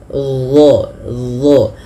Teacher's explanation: huruf dha ini dia makhrajnya sama dengan huruf dzal, akan tetapi yang membedakan adalah huruf dha ini harus ditebalkan.